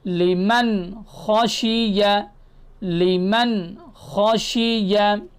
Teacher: لمن خشیہ، لمن خشیہ میں دیکھیں نون ساکن ہے اور نون ساکن کے بعد حروف حلقی میں سے خ آ رہا ہے۔ تو جب نون ساکن ہو اور اس کے بعد حروف حلقی میں سے کوئی حرف آ جائے، جیسے خ یہاں آیا ہے، تو ہم کیا کریں گے؟ نون کو ظاہر کریں گے